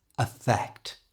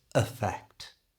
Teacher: But in effect, that E at the beginning is changed to the schwa sound that we've already talked about, so it becomes affect.